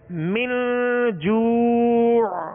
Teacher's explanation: اخفاء کریں گے، یعنی ناک میں آواز کو لے جا کر ظاہر نہیں بلکہ چھپائیں گے